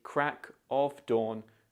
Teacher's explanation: In natural speech, when we say crack of dawn, quickly and informally, the of sound can often become subtle or even omitted altogether. In other words, the of is replaced with the schwa sound, This can make the phrase sound more like crack of dawn instead of crack of dawn.